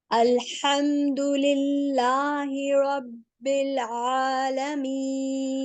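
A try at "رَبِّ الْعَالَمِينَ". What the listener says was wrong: रब्बिल, नो बिल, थोड़ा सा अभी भी आपका लाम हिल रहा है। लाम की प्रैक्टिस करें, लाम जज्म वाला। जब भी लाम जज्म वाला, नून जज्म वाला, कोई भी हर्फ जज्म वाला है ना कलकला के अलावा, उनकी प्रैक्टिस करनी है सब बहनों ने।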